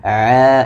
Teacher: suaranya ditekan diturunkan sehingga dia tidak masuk ke rongga hidung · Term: huruf Ain